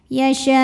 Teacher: Maka shin dipanjangkan, boleh 4 boleh 5 harokat. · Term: mad wajib muttasil